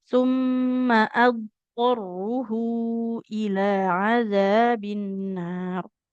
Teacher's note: Nah, kemudian huruf bod sukun tak boleh dipantulkan ya. Karena huruf dot itu punya sifat rokhawah, mengalir suara.